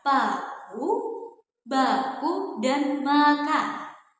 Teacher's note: bunyi bilabi ini adalah bunyi yang dihasilkan melalui pertemuan antara dua bibir, yaitu bibir bawah atau labium inferius yang merupakan artikulator aktif bertemu dengan bibir atas atau labium suferius yang merupakan artikulator fasif atau sebagai titik artikulasi. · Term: bunyi bilabial